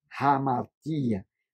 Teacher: Porque tem uma aspiração eh forte aí logo em cima do alfa